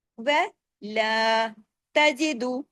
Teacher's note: اب دیکھیے وَلَا، و کے ساتھ الف نہیں ہے، لا کے ساتھ الف ہے، و ایک حرکت، لا 2 حرکت